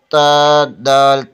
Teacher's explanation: زبان کی نوک ثنائے علیہ کی جڑ سے لگے تو تا، دال، تو ادا ہوتے ہیں